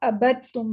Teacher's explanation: बा को डायरेक्टली ता के साथ मिलाया जाएगा · ठीक है, ये हम इदगाम के उसमें पढ़ेंगे इंशाल्लाह, लेकिन यहाँ पे आपको सिंपली भी बता रहे हैं कि इदगाम का कायदा हो रहा है। दाल जो है वो ता के अंदर मर्ज हो जाएगा और दाल पढ़ा नहीं जाएगा